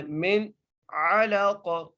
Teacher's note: نون ساکن ہے، یہاں پر ہم غنہ نہیں کریں گے، ٹھیک ہے۔ کیونکہ حرف حلقی میں سے عین آ گیا ہے